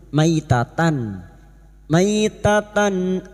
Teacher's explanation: tak marbutoh yang berharakat fathah tanwin atau fathatain bertemu Hamzah Idhar halq dibaca jelas tanpa mendengung